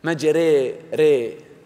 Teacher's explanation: إذا رفعت اللسان يعني رفعا شديدا جدا تحول إلى ياء، ري ري ري ري، آسف، ري ري ري، لسان يرتفع إلى يعني قريب من سقف الفم الحنك. الإمالة الكبرى وهو الإضجاع، يعني 50% ألف 50% ياء